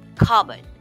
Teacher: It may be or it may have the word cup in it, but the P is generally silent. The O is also not emphasized, making the pronunciation a breezy cupboard.